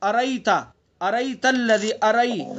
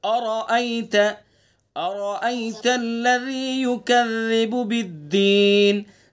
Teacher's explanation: دیکھیں یہاں پر را کو پر پڑھیں گے، حمزہ کو صاف ادا کریں گے۔ را سے پہلے بھی حمزہ اور را کے بعد میں بھی حمزہ ہے، ٹھیک ہے، دونوں حمزہ کو صاف پڑھنا ہے۔